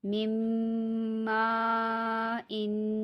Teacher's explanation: یہاں پہ میم میم سے ملے گا اور غنہ ہوگا